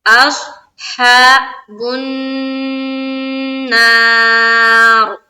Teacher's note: یہاں پر جب ہم اسٹاپ کریں گے تو را کو ہم پور کر کے پڑھیں گے، کیونکہ جب اسٹاپ کریں گے تو رائے ساکینہ ہو گیا.